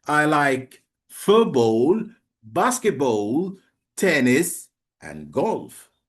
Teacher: Do you know commas? The voice rises at the end of each item but falls with the final item like full stop. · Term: Non-final intonation